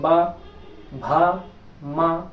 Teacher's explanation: जिसमें दोनों ओष बंद हो जाए ऐसी ध्वनियों के उच्चारण में ऐसा स्थान होता है जिसमें दोनों दोनों ओट बंद हो जाते हैं